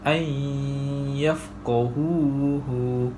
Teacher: Nun mati bertemu dengan huruf ya. Cara bacaannya ialah memasukkan nun mati ke dalam huruf ya beserta dengung 2 harakat. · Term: idgham ma'lunah